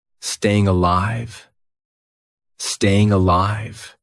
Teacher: It's just neutral. Nothing happens with the mouth. Nothing happens with the tongue. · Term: Schwa